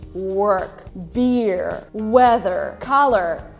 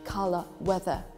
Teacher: if you want to sound more british you pronounce these words without pronouncing r